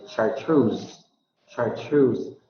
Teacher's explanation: the major stress is assigned to the second syllable